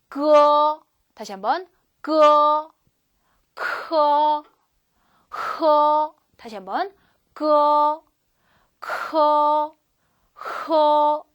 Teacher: 뿌리랑 관련데 혀뿌리니까요 안쪽 끝이죠. 그래서 마치 그 뭐 트림하거나 고를 때 나는 소리처럼 밑에서 끌어 올린다 기억하시면 되겠어요. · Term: 혀뿌리 소리